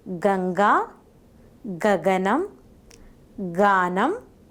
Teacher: the back part of the tongue makes contact with the soft palate as in the production of Ka. The soft palate is raised, stopping the escape of air through the nasal passage.